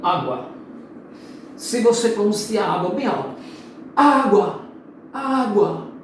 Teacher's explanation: o U, que soa mais fraquinho, é semivogal. E o A é a vogal, né? Água.